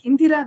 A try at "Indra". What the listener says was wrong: it is not Indira. It is Indra.